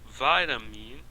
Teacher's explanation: A palavra vitamin se pronuncia vitamin, a pronúncia está em vit.